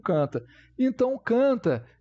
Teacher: Estou pronunciando utilizando também o meu nariz aqui a vibração do nariz então ele é nasalado então o n nesse caso ele não é pronunciado como por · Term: a nasalado